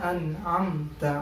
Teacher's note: Nun sukun bertemu dengan ain, dan ain itu ada di tenggorokan, di kerongkongan. Untuk keluar hurufnya ada di kerongkongan.